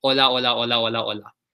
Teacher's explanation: Spanish, H's are silent. So it's not hola or like hola, or you don't pronounce that H. It's hola. H is silent.